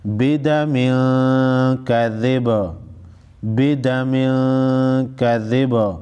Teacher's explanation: तनवीन के बाद हुरूफ इख्फा में से काफ है, इख्फाई हकीकी होगा, इख्फाई हकीकी होगा, गुन्ना के साथ अदा करेंगे। · वक़फ़ की सूरत में बा साकिन पढ़ेंगे और बा साकिन पर क़लक़ला करेंगे।